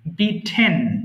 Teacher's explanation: মাঝখানে ট আছে, একটা টি আছে, এটাকে ঠ উচ্চারণ করবেন